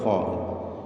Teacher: തൊണ്ടയുടെ മേലെ അറ്റം അവിടെ നിന്ന് തടിപ്പിച്ചു കൊണ്ട് ഉച്ചരിക്കേണ്ട അക്ഷരമാണ്